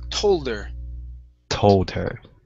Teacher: you were good at dropping the H. That's what you want to do, but you need to pronounce that L. If not, it's toder.